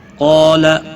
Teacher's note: قاف اور الف دونوں پور پڑھے جائیں گے۔ قاف حروف مستعلیہ میں سے ہے، پور پڑھا جائے گا۔